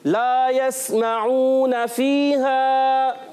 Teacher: ला हुर्फ़े मद्दा, अलिफ मद्दा खींचना है। कितना खींचना है? एक अलिफ, यानी दो हरकत की मिकदार में।